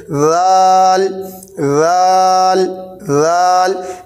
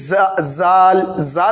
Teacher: زبان کی نوک ثنائے علیہ کے کنارے لگائیں گے، نرم آواز کے ساتھ پڑھیں گے اور اس میں سختی بالکل بھی نہیں ہوگی.